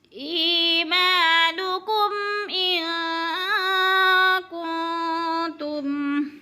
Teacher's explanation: ما پہ الف مدہ، ایمانکم ان کنتم، ان پہ اخفاء ہو رہا ہے، نون ساکن کے بعد کاف حروف اخفاء میں سے ہے تو اخفاء کریں گے، یعنی آواز کو چھپا کر پڑھیں گے، ناک میں آواز لے جائیں گے۔ کن پہ بھی اخفاء ہو رہا ہے۔